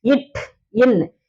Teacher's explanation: நாவினுடைய நுனி பகுதி வந்து அன்னத்தின் நுனி பகுதியை பொருந்துவதால் பிறக்கின்றது